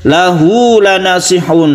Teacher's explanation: Hak ini disebut dengan mad silah qasirah, dan kita panjangkan satu alif saja. Hak ini ditandai dengan dhammah yang terbalik yang menunjukkan dia itu panjang.